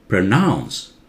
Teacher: pronounce Pro very soft nouns louder